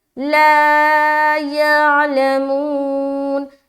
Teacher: مدہ، الف خالی اور اس سے پہلے زبر آ گیا لہٰذا الف مدہ کریں گے، ایک الف کے برابر کھینچنا ہے